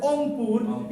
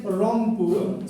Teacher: Someone says Ongpur instead of saying Rongpur, so they cannot say the phoneme R.